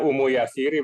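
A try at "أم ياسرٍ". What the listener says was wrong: Ummu Yasirin, tanwin. Abu Yasirin, Ummu Yasirin.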